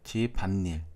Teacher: 인몸으로 발음이 되므로 니은이 추가된 걸 알 수 있습니다 · 집안일에서는 집안일, 니은이 추가됐죠. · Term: 니은 첨가